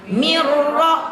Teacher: Milladunka rahmatan, milla jangan 2 ketukan dan tidak dengung. Mirrizqin, nun mati ketemu ro, jangan sampai kita didengungkan